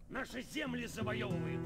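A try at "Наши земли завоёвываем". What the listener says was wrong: Чуть ударение неправильно ты ставишь.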